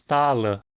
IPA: tálə